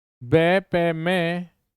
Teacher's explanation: लेकिन बे का भी क्या है ओष्ठ है, पे का भी क्या है ओष्ठ, और मे का भी क्या रहेगा ओष्ठ रहेगा